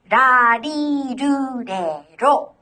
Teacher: It's neither the L sound or the R sound of English. Remember, it's like a quick D sound.